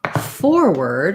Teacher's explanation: so we no longer have the or sound for the ward in this case it's an unstressed er sound